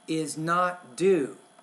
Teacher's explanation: you want to put a little bit of stress on the word not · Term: sentence stress